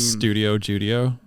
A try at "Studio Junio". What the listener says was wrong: Junio with an N. Studio Junio.